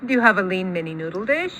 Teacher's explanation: you definitely hear the rise at the tail end · maybe you can hear that little low star bounce on noodle.